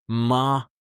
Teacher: Your voice goes up like asking a question. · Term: rising tone